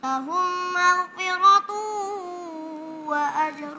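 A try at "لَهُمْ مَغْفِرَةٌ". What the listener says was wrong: Itu maghfiratu. Enggak harus ada getaran. Maghfiratu.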